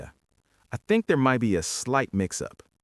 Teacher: we do not hit the t in might. We completely drop it. We blend the words together. So it sounds like might be might be.